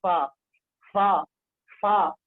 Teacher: ثنایا علیا کا جو کنارہ ہے وہ نیچے والے ہونٹ کی تری کے ساتھ ملا کے پڑھیں گے ، فا فا فا، فا کا مخرج ثنایا علیا کا کنارہ